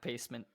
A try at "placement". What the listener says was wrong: Pacement or placement? You said pacement. You did.